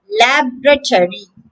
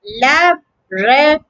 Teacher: With a stress on the first syllable, lab.